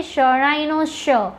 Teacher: હવે શ એ તાલવ્ય સંઘર્ષી ધ્વનિ છે. કેમ? જ્યારે તમે શનું ઉચ્ચારણ કરો છો ત્યારે તેના ઉચ્ચારણ વખતે જીભનો આગળનો ભાગ તાળવાનો જે આગળનો ભાગ છે જેને આપણે પૂર્વ કમાણ કહીએ છીએ તેને સ્પર્શે છે માટે શ એ કેવો છે?